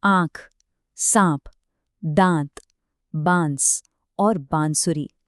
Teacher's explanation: हर एक शब्द में चंद्र बिंदु उस स्वर को एक नासिक्य यानी नाक से निकलने वाली ध्वनि दे रहा है, जो उसके उच्चारण और अर्थ दोनों के लिए बहुत जरूरी है।